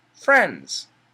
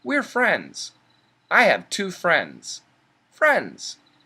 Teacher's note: We have an NDS. The N and the S are strong sounds, and the D is a weak sound. So we can cancel the D and just say friends.